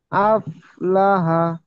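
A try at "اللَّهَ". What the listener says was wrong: আপ না, আফ, আফ, আফ লাহা।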